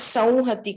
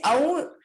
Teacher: anuswara comes before the ha or before the va, we tend to pronounce it with a nasal sound